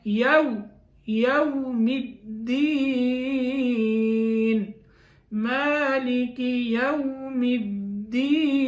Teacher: یہاں ہونٹ گول کرنے ہیں واؤ کی ادائیگی میں، کیونکہ واؤ ہونٹوں کی گولائی سے ادا ہوتا ہے، یعنی واؤ کے ادا کرنے وقت ہم ہونٹوں کو گول کریں گے تو واؤ ادا ہوگا، یوم الدین، مالک یوم الدین۔